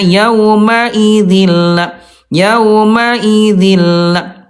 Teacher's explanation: idgam melebur bila gunah tanpa gunah, tanpa dengung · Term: idgam bila gunah